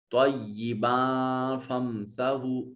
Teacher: با کے اوپر بھی تنوین ہے اور اس کے بعد فا حرف اخفا ہے، اس تنوین کو نون تنوین کو اپنے مخرج میں چھپا کر ادا کریں گے۔